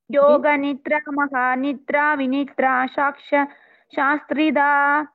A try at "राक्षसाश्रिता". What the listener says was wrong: राक्षसाश्रिता it is not saksha rakshasashrita